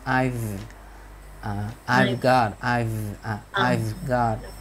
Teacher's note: Thì cái chữ V đó nó lại rõ cái chữ V ra cũng được. Vì nó chữ V đó nó không phải là cái âm stop sound. Chữ V nó là hữu thanh